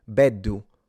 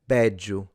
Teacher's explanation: Some will pronounce it like a D, while others will actually transition into a J sound. So either beddu or bedju.